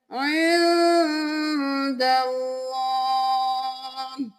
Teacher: اللہ کا لفظ موٹا پڑھیں گے کیونکہ اس سے پہلے والے حرف پر زبر ہے